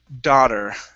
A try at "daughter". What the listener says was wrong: Yeah, instead of dau, it's da.